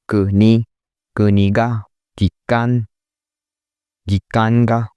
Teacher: It starts low and stays high for the rest of the word. One thing to notice that the particle which will follow this word also stay high.